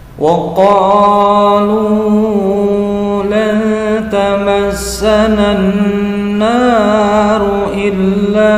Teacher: lan ikhfa haqiqi mendengung samar panjangnya dua harokat, tamassanan alif lamnya samsiyah karena tidak terbaca dengan jelas, nunnya bertasdid menjadi mendengung disebut dengan gunnah musaddah panjangnya dua harokat.